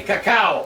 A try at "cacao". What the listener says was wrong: You guys sound good in Spanish, but I heard something like caca. It's cacao.